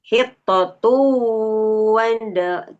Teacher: Dengungkan selama 2 harokat. Dengung itu ya sengau. Masuk ke hidung ya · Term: idgham bigunah